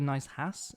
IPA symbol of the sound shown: h